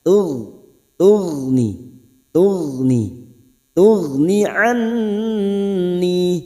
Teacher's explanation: Tughni anni, nun yang bertasdid gunnah musaddadah, dengung yang bertasdid kita dengungkan selama 3 harokat dengan catatan saat membaca dengan tempo yang sedang, tidak cepat juga tidak lambat, atau dalam istilah Al-Quran disebut tadwir, membaca Al-Quran dengan kadar yang sedang.